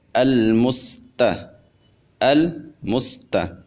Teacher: اب چونکہ لام اور سین یہ دونوں حروف ساکن ہیں تو ہم نے ان کے سکون کو کامل طور پہ ادا کرنا ہے۔ · جب ہم سین کو ادا کریں گے تو اس کے اندر خوب سیٹی پیدا کریں گے۔ اب چونکہ سین ساکن ہے تو سین کے سکون کو مکمل طور پہ ادا کریں گے، اس کو ناقص ادا نہیں کریں گے۔ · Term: سیٹی والے حروف